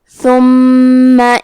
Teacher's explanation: کلمت ثم میں حرف الثا کی ادائیگی زبان کے سر اور اوپر کے دانتوں کے اندرونی کناروں سے ہے. حرف المیم پہ تشدید ہے تو ہم 2 حرف کے برابر میم کو پڑھیں گے